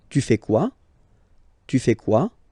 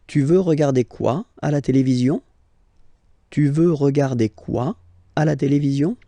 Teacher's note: you definitely need to raise your voice at the end